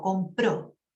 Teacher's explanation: hago una o bien redonda bien larga